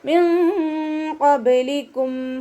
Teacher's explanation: നൂൻ സാക്കിനയ്ക്ക് ശേഷം ഇഖ്ഫാൻ്റെ ലെറ്ററായിട്ടുള്ള ഖാഫ് വന്നിട്ടുണ്ട്. നൂൻ സാക്കിനയെ മറച്ചു വെച്ചിട്ട് മണിച്ചോതി കൊടുക്കുക കേട്ടോ. നൂനിൻ്റെ സൗണ്ടിനെ ഒന്ന് ഹൈഡ് ചെയ്യുകയും ചെയ്യുക, അതോടൊപ്പം തന്നെ ഉന്ന കൊടുക്കുകയും ചെയ്യുക.